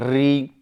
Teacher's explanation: आपकी जिह्वा र जो मसूड़े है उस पर जाकर के वाइब्रेट करती है